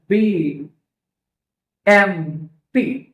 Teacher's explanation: The air is blocked at the lips. That means we close our lips.